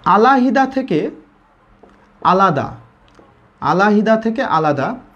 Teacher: মাঝের হ লোপ পেয়েছে ঠিক, কিন্তু বাকি অংশে কোনো পরিবর্তন হয়নি। আ লা দা হুবহু বসে গেছে দেখেন, আলাদা।